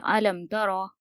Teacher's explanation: یہاں پر ہم گنہ نہیں کریں گے، بغیر گنہ کے ہم پڑھیں گے اور میم کو ہم ظاہر کر کے پڑھیں گے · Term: اظہار شفوی